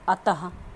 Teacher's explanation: कंठ से जब बोलते हैं तो हल्के ह का जो उच्चारण होता है वो क्या होता है हमारा आपका ये विसर्ग होता है।